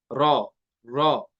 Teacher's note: रॉ जो है ना जुबान की नोक और तालु जुबान की नोक लगती है किसके साथ? ऊपर तालु के साथ